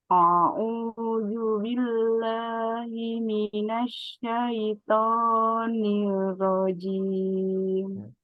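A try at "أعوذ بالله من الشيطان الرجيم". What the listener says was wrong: Haknya masih tertukar itu dengan hak. Shinnya juga masih ya. Masih himina.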